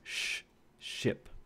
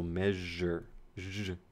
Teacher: these are alveolopalatal, meaning that these are just made behind the alveolar ridge.